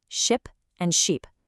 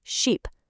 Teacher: For ship, it's a short sound, your mouth is pretty relaxed, ship. But for sheep, that vowel is long and you have to stretch your mouth out, kind of like you're smiling, sheep.